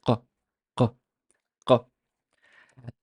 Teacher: we make contact between the back of the tongue to the uvula. We bring it back to almost contacting, and then it stops the air in that direction, giving you the sound q, q, q. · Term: qaf